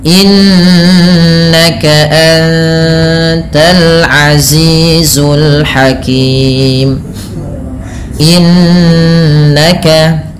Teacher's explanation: ada Nun yang berharakat tasydid ini ditahan dengan bacaannya dua harakat dengan menahan bunyi nnya